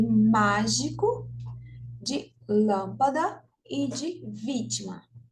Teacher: a sílaba tônica é a antepenúltima, como é o caso de mágico, de lâmpada e de vítima. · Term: proparoxítonas